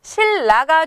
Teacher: 니은과 리을이 만났을 때 니은이 리을로 바뀌는 유음화 현상이고요